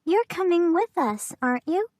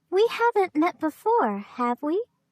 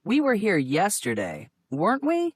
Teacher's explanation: Notice the rising intonation in tag questions to confirm information.